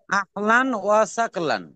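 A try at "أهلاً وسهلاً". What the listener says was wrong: সাকলান না, সাহলান, হ হ, সাহলান।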